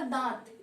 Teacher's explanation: दांत, इसे बोलने में हमें ज्यादा प्रेशर नहीं देना पड़ा, क्योंकि इसे हम मुंह और नाक दोनों की सहायता से इसे बोल रहे हैं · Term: चंद्र बिंदु